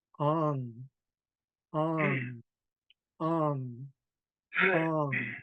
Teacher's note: We have ong for yes, ong. Make sure your tone goes up.